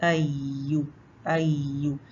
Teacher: या के मखर में शीन के मखर से भी निस्बत ज्यादा गैप है तालू और जबान के दरमियान